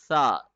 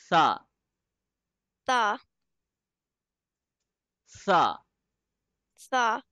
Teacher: the tip of the tongue will be touching at the edge of the Upper Front Teeth